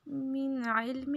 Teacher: یہاں پہ اظہار ہوگا، ناک پہ آواز کو نہیں چھپانا